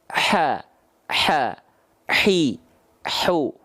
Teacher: dari mulut Nah karena hak kecil mengeluarkannya dari bagian tengahtenggorokan tumpuannya maka nafas yang mengalir karakteristiknya berbisik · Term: ha kecil